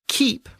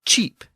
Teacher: the original Anglo-Saxon K sound assimilated or shifted to a CH sound. So keep became cheap in Old English.